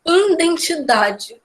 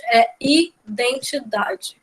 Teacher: Não tem esse N depois do I.